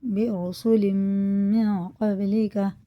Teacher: وَلَقَدِ اسْتُهْزِئَ، یعنی پڑھیں گے، حمزہ پڑھیں گے، بِرُسُلٍ مِّن قَبْلِكَ، با میں قلقلہ ہے، قاف میں اخفا غنہ کر کے پڑھیں گے، میم میں بھی غنہ ہے